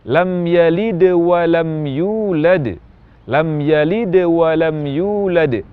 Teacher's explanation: bunyi Qalqalah lam yalid di tengah-tengah kalimat yang sedang saya ucapkan tidak sejelas Qalqalah huruf Dal